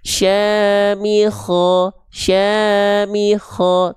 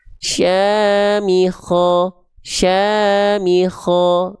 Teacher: kenapa huruf kho di sini dibaca vokalnya kayak vokal O, karena tentu dia huruf yang tebal